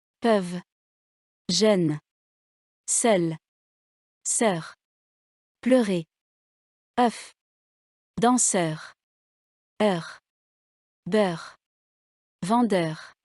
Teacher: Les voyelles, de la deuxième série, sont antérieures. La langue touche les dents inférieures. Elles sont aussi arrondies. Les lèvres sont arrondies. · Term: voyelles antérieures, arrondies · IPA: [œ]